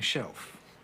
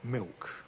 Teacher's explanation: what's happening to the consonant L is that it's ceasing to be made again with the tongue tip and turning into a kind of vow rather like a W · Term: vocalization of L